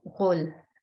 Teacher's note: You hear the sounds of the ghain and the lam, and those two join together